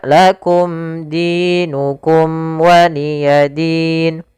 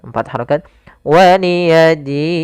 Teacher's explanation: Maka waliyadin di sini kita boleh memanjangkan dua harakat atau empat harakat ataupun enam harakat.